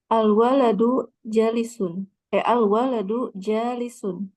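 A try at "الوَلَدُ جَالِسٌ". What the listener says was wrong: Masya Allah, perfect.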